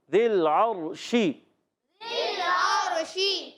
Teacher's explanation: صفت تفشی، منہ میں آواز پھیلتی ہے